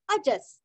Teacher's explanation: विसर्ग का उच्चारण आधा स